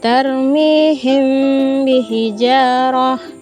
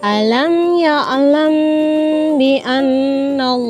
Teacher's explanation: Ikhfa dan ba pada bibir. Kemudian ditahan kira-kira 2 harokat atau ketukan seraya mengeluarkan suara ikhfa dari pangkal hidung. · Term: ikhfa syafawi